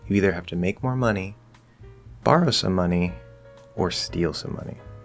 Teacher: we're still rising on the first option rising on the second option falling on the last option